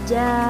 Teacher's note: Cara membaca mad wajib muttasil adalah wajib dipanjangkan 5 harokat atau 2,5 alif.